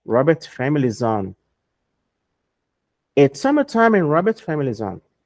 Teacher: Esse S do is vai ficar com som de Z.